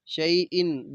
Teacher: وقف کریں گے علیم، شئی ان دو زیر ہیں، نون تنوین، بعد میں عین ہے، تو ادھر ہم غنہ نہیں کریں گے، اظہار کے ساتھ پڑھیں گے